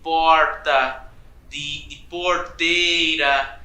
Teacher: o que a gente chama de R retroflexo, aquele R de porta, de porteira